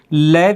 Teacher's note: और इस व्यंजन के अंतर्गत ल व्यंजन है, इसका उच्चारण पार्श्विक व्यंजन की तरह किया जाता है। यानी ल का उच्चारण करते हैं तो ये हवा है जो दोनों जीभ की साइडों से बाहर निकलती है